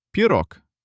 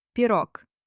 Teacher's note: At the end of a word, a voiced letter gets scared and turns into its voiceless twin, the letter K.